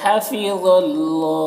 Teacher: हा और ज़ा दोनों में खड़ा ज़बर है, एक जो अलिफ मद्दा की तरह है और ज़ा को पुर पढ़ेंगे, हुरूफ़ मुस्तालिया में से है